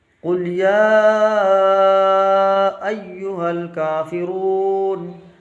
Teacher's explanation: یا میں مد بھی ہے اور کھڑا زبر بھی ہے، تھوڑا کھینچ کے پڑھیں گے